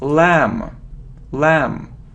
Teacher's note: no we don't pronounce B